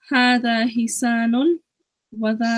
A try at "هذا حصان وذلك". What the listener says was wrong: So your Saad, I'm not the master of pronunciation, but your Saad sounded more like a scene. Hisanun. So it should be, there's a difference between Hisa and Hisa.